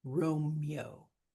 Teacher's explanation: So elision, it is contracting those two syllables down into one. It's just getting rid of that extra syllable.